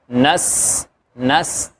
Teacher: پھر اسی طرح نس، نون کو سین سے ملانا ہے، اور سین کے اندر سیٹی کی سی آواز آئے گی